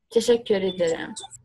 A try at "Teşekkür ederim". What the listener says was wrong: Yeah, like a little bit longer with the first e. Teşekkür ederim. Teşekkür ederim. Teşekkür. Teşekkür ederim. Yeah, teşekkür ederim.